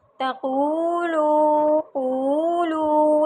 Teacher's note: تقولو میں قاف کو موٹا کریں گے اور قاف بھی لمبا ہوگا، لو بھی لمبا ہوگا۔ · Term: واو مدہ